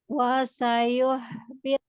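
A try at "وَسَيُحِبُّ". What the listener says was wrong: Mulutnya kurang monyong waktu ya lagi dhammah. Wasayuh.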